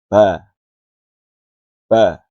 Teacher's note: Jenis hurufnya termasuk dibaca tipis dan jelas. Tidak boleh dibaca tebal dan tidak boleh ada dorongan nafas yang keluar pada saat membaca huruf ba. Dan keluarnya dengan mudah saat dibacanya atau saat diucapkannya.